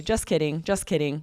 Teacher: That K replaces the T and we rarely will hear the T. We just say just kidding, just kidding. We drop the T entirely.